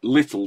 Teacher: little has got the dark L at the end